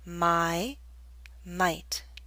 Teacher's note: The Y in my is longer because it's an open sound.